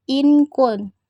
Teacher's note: Hukumnya ikfa, karena huruf nun sukun bertemu huruf kaf. Cara membacanya samar dengan dengung. Pengucapannya nun sukun seperti menjadi ing. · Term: ikhfa